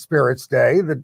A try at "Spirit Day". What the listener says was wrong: Spirit, not spirits. I think you said spirits.